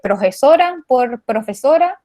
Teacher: el sonido aspirado, sí lo hallé como en reemplazo del sonido F